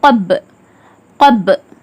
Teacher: ப கல்கலாவின் எழுத்து. கல்கலா செஞ்சு இருமுறைகள் அசைச்சு அதட்டி ஓதுற மாதிரி ஓதணும்